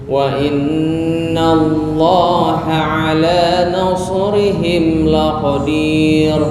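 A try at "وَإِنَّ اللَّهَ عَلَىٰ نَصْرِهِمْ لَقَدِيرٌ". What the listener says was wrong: Oke, bukan laqadir, itu tafkhim. Ini tarkik tipis. Karena sebelum ro kan sebenarnya ada harokat ya, tapi karena wakof dihukumi sukun.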